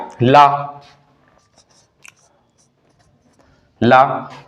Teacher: ला को हम पार्श्विक कहते हैं। ला की जो आवाज निकलती है वो कहां से निकलती है, हमारी जीभ और मसूड़े के बगल से निकलती है